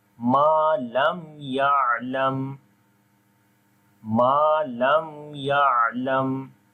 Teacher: After the meem sakin, the next letter is ya now. So we make izhar shafawi here. We make the clear sound of meem.